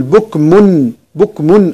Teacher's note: بكم تنوين بالضم بعديه عين هذا إظهار، نقول بكم بكمن إظهار، يعني إظهار التنوين اللي هي النون الزايدة، بكمنعو بكمنعو.